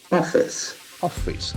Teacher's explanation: the accent falls in the first syllable. It's straight O.